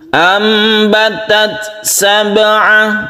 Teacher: Di sini ada ta yang sukun ya. Ta yang sukun itu kan bersifat hamas atau mahmus. Sedangkan sifat hamas itu condong ke huruf sin atau s sedikit